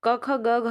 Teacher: वर्ण हैं कंठ से बोले जाने वाले